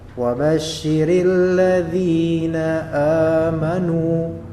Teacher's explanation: Ada dza dia kasrah ketemu dengan ya mati, maka dia menjadi mad tabi'i dua harakat.